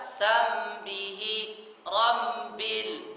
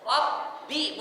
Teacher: Harus jelas ba-nya bertasydid dan dia suara terputus. Rabbi bukan rambi.